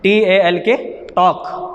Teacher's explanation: ٹاک، L silent کر دیتے ہیں۔